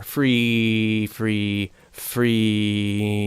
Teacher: the back of my tongue raised up and my soft palate went lower